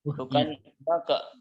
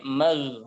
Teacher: ghain sukunnya tidak boleh qalqalah. Bukan maka, tapi mag.